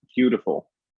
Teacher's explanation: if you really hit that tapped T and the kind of quality of the vowels, it'll really kind of sell that American accent